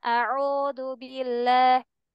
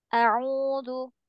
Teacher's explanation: Dhammah itu melambangkan fonem U, mulut mencucu.